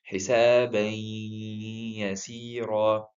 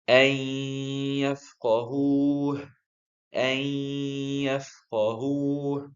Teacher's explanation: So we're replacing the tanween with the ya sakina, and then combining them together to be ya mushaddada. So we're not pronouncing any noon sakina here. The nasal sound here is the gunna. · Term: idgham with gunna